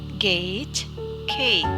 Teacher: G and G are velar sounds. The closure is made by the back of the tongue against the soft palate. G is unvoiced and G is voiced.